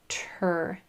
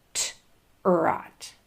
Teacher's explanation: Really grab that TR blend and spit out the sound of the T with a lot of breath, and then in that R is just going to sneak right into that space so that blend can happen.